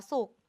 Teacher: เราเขียนสุขสะกดด้วยขไข่แต่เวลาอ่านเราอ่านเหมือนว่ามีตัวกเป็นตัวสะกด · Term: มาตราแม่กก